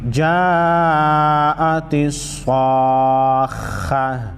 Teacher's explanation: وقف کی صورت میں گولتا کو ہا پڑھیں گے